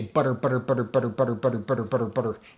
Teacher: it kind of puts the tongue in that trill kind of place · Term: tongue trill